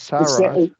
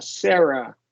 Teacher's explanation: Sarah with the short E. in the first one, and then a schwa.